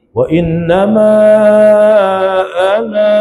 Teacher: Kalau kita berhenti, wa innama ana, ada alif. Kalau kita wasal tak ada alif ya.